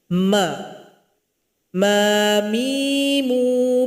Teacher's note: Huruf mim keluar dari bibir atas dengan bibir bawah yang saling berjumpa. Mim dikasih harakat menjadi ma.